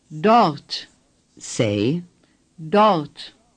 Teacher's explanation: The R is hardly pronounced.